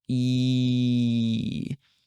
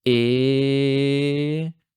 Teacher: If it's E, it's very little space. I'm not that open, tongue is raised really high, slowly pressing that sound out, as opposed to for I, I'm kind of shooting the sound out really, really fast. And again, I'm giving it more space, so my tongue is not as high and my mouth is a little more open.